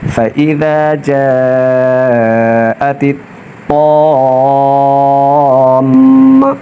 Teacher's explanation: فإذا جاءت الطام، میم زبر ما، میم مشدد ہے تو غنہ ہوگا، ناک میں آواز لے کر جائیں گے